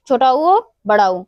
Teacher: छोटा उ और बड़ा ऊ। ये हमारे ओष्ठ से उच्चारित होते हैं।